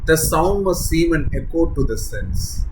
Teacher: he intentionally uses sibilant S phonemes to create a hushing sound that mimics his meaning